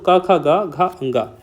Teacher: तो इन कचटतब वर्ग में कौन कौन से आता है, तो पहले आता है कंठ व्यंजन वाला, क वर्ग वाला। तो जिन वर्णों का उच्चारण करते समय जीभ का पिछला भाग कंठ को स्पर्श करता है या हमारे कंठ को स्पर्श करता है उन्हें हम कंठ व्यंजन कहते हैं